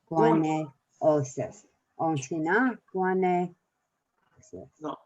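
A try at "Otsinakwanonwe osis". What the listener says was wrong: No, you're missing the middle.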